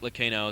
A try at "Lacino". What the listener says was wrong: You don't pronounce the H in Lacino. It's not Lacino, it's Lacino.